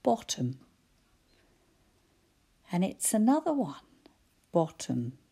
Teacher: I can hear bot all right, but that at the end, I can hardly hear a vowel. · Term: schwa